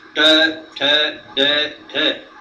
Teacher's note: The tip of the tongue touches hard on the upper gum.